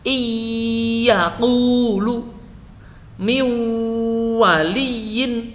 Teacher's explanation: bertemu dengan wawu atau ya, maka suara nun itu tidak sepenuhnya lebur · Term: idghamnya naqis